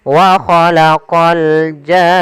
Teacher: Panjangkan jarnya dulu enam harakat baru masuk ke nun. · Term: mad lazim, mad lazim kalimi musaqqal